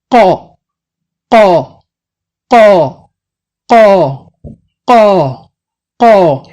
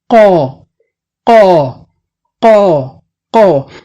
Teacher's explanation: the back of your tongue touching the soft palate, rising to touch the soft palate